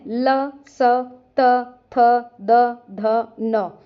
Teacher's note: जीभ दांतों को स्पर्श करेगी। उच्चारण स्थान दंत होने से ये दंत्य वर्ण है।